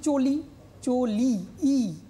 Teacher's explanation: ইটা কিন্তু সম্পূর্ণরূপে উচ্চারিত হয়েছে